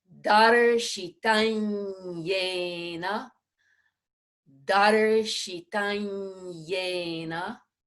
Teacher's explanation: It may, for those of you who may not have studied a lot of Sanskrit, it is that ya sound occurs in the back of the mouth in what we call the soft palate. So the anusvara preceding yay has to be the nasal sound that matches that, so that it'll end up being an N with a tilde on it. So it would be yena, yena.